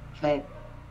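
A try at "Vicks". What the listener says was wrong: Pero la K, no escucho la K, la K. Vec.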